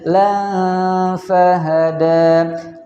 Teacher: Kemudian lan fahada. Di situ ada fathah tanwin bertemu dengan huruf fa, maka hukumnya ikhfa, dibaca dengan bacaan yang dengung.